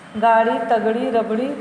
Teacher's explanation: अड़ा और अढ़ा के उच्चारण में वायु जीभ से टकरा कर वापस आती है और बाहर निकलती है, इसलिए इन्हें अतिरिक्त व्यंजन कहते हैं।